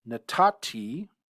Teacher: Natati, this is a Cal perfect 1cs conjugation of Natan. You can see the final noon assimilates into the T suffix